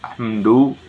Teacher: Pada lafaz hamdu terdapat izhar safawi karena huruf mim sukun bertemu dengan huruf dal. Dengan cara membacanya dengan jelas dan tidak dengung